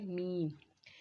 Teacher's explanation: میم ہونٹوں کے خشک حصے سے ادا ہوتا ہے